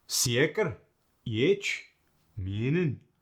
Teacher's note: The E sound randomly gets the ya sound right after it.